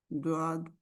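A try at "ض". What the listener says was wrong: द्वाद नहीं होगा, दाद होगा। जुबान इधर से साइड से करवट जुबान की जो है वो लगती है ना पीछे वाली 5 दाढ़ों से जी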